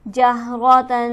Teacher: جہرتن، جہرہ کو ہم جلدی پڑھیں گے، تا پر ہمارے پاس ہے تنوین اور اس کے بعد حرف ہلکی موجود نہیں ہے، تو لہٰذا اسے ہم غنہ سے پڑھیں گے